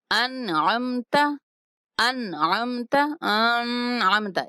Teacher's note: اب عین جو ہے وہ حروف حلقی میں سے ہے اور نون ساکن کے بعد عین آیا ہے تو یہاں پہ ہم غنہ نہیں کریں گے، یہاں پہ اظہار کریں گے۔